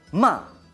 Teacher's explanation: Cuarto tono, el que decimos que es imperativo, el que es como el que tiene una tilde, ma.